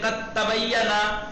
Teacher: بولیے ہاں دال نہیں پڑھا جائے گا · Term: ادغام